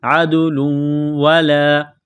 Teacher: تو دال پر قلقلہ کریں گے، عدل، تنوین ہے دو پیش، تنوین کے بعد واو ہے، واو مشدد ہے تو تنوین پر غنہ کریں گے